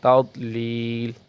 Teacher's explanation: ضاد کو پر کریں گے، قلقلہ نہیں کریں گے